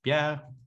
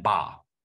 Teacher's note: these all are obstruents with the same place of articulation. So maybe the phonetic in the character is saying bilabial stop.